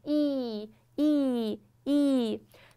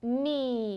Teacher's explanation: 张的时候呢，说的是垂直的这个方向上，嘴巴要啊张开，所以说这两个大家理解一下。那么▁e▁这个口型， 嘴角拉到最大，横向拉到最大，扁平几乎要露出你的下排牙齿了